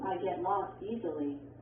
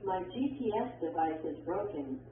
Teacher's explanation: Your voice goes down or falls at the end of a statement. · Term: falling intonation